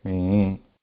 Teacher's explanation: The combination is starting with udatta and ending with anudatta in the same matra kala. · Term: swarita